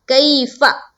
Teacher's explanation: جیسے کہ یہاں پر دیکھیے میم ساکین ہے، یہاں پر ہے یا ساکین، اور یا ساکین کا قاعدہ ہے کہ یا ساکین سے پہلے زبر ہو تو یائلین کا قاعدہ بنتا ہے، اور یائلین کو ہم کس طرح پڑھتے ہیں؟ نرم آواز کے ساتھ جلد اور معروف۔ تو نرم آواز کے ساتھ یہاں پر پڑھیں گے اور جلد پڑھیں گے۔